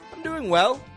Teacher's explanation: Again, peaking up the tone on well.